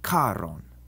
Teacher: Instead, in Latin, the CH is like a C with a breath of air after it, like the CH in character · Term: aspirated consonants